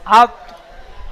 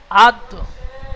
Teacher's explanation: জিভের আগা এবং সামনের উপরে দুই দাঁতের গোড়ার সাথে লাগিয়ে উচ্চারিত হয় ত, দাল, তা